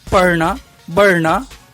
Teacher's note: इन ध्वनियों के उच्चारण में जीभ में हल्की सी फरफराहट होती है, इसलिए इसे फ्लैप्ड गटरल कहते हैं।